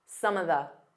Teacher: Instead of saying of, you can just do an unstressed some of the. So it sounds like one word.